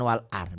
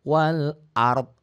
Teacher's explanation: Jadi ada 2 huruf mati dalam bunyi, tidak dalam tulisan.